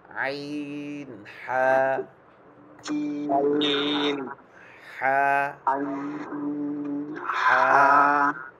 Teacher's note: গলা কেউ চিপ দিয়ে রাখলে যেরকম একটা আওয়াজ হয়